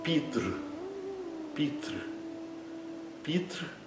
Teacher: com a ponta da língua voltada um pouco para trás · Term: vogal R